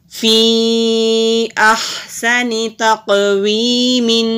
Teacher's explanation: فا کے نیچے زیر ہے، اوپر مد بھی ہے، اس کو ہم 3 سے 4 حرکت کے برابر لمبا بھی کریں گے۔ قاف حروف مستعلیہ بھی ہے، موٹا بھی کریں گے اور کلکلا بھی ہوگا، اور یا سے پہلے زیر ہے تو ایک الف کے برابر لمبا کریں گے۔